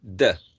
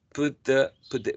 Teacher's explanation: be this one becomes more like the Spanish uh the because the tongue is placed behind the upper teeth put the put the because of the influence of this one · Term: Progressive assimilation